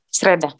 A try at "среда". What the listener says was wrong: Enggak ada T-nya, Sreda.